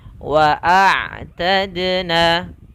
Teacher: huruf ain itu kita keluarkan dari tenggorokan. Misalkan di sini ada tenggorokan atas, tenggorokan tengah, dan tenggorokan bawah.